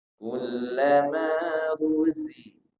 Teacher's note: Zai ini tidak berangin ya. Tapi dia punya desis namanya sofir.